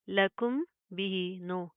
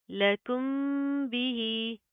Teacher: मीम का इख्फा होगा। तो अगेन क्या है, साउंड इन नोज, ना के अंदर आवाज पैदा करेंगे।